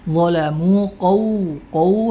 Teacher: pangkal lidah kita naik karena ketebalannya sehingga bunyi suara menjadi tebal dolamu Q qu hati-hati jangan sampai KW jangan sampai Kaf dirubah